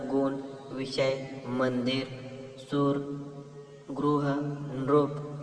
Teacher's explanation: संस्कृत मधून मराठीत जसेच्या तसे आलेल्या तत्सम शब्दातील अंत अ हा पूर्ण उच्चारित आहे